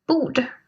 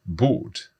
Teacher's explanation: we're not even hearing that R in there.